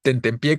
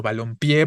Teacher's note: dónde suena fuerte al final palabra aguda terminada en vocal